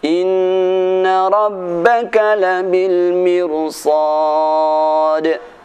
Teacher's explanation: Mirsada dan labil mirsad dibaca dengan tebal walaupun sebelumnya ra berupa kasrah